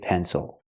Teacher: the closed relaxed sound uhuh plus the dark l